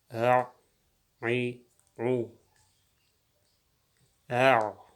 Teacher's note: Ayn harfining maxraji halqumning o'rtasidan chiqadi.